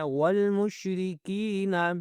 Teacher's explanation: کاف کو میں نے کھینچا کیونکہ نیچے زیر ہے اور یا ساکن ہے